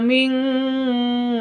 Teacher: nun sukun bertemu dengan kaf samar disertai dengung